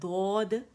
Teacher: ہماری زبان آگے سے ہٹ جاتی ہے اور دال کے مخرج پہ نہیں جاتی، بلکہ آواز ہماری سائڈ سے نکلتی ہے، موٹی آواز ہوتی ہے، دو آتی ہے.